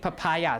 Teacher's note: pronounce it papaya or papaya or papaya right papaya right papaya so the stress is on the second syllable